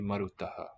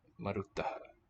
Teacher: at the end of a word, so in final utterance, final position, and often in the coda, the underlying S aspirates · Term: visarga